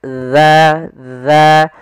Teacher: huruf dalal ujung makhrajnya agar sempurna adalah kita sesuai makhrajnya yaitu ujung lidah kita menempel dengan gigi di atas